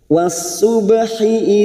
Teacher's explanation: Was-subhi idza tanaffas, was masuk ke dalam ta'rif yang tidak bersukun idgham samsiah. Was-subhi ba sukun mati asli di tengah-tengah kalimat, qalqalah sugro kita pantulkan